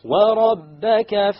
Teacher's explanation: the ra will be heavy because it has a fatha